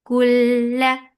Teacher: this is idgham without kunna, so you're not keeping the sound in your nose at all. Kulla for fatha open jaws, the sound is short.